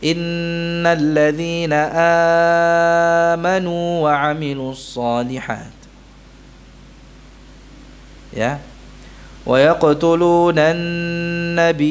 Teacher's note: riwayat Warsh, ya, mad badalnya dibaca lebih dari 2 harakat, 4 atau 6 harakat